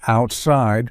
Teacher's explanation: in the word outside which has a t sound in the middle it has that stopped articulation because it's comprised of two parts out and side this is